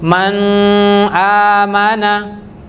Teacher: nun dengan simbol sukun maka dia pasti dibaca jelas tidak dengung